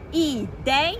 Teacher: No caso de ideia, começou pelo som mais forte, que é o E, e foi pro I, que é o mais fraco. Então, é um ditongo decrescente.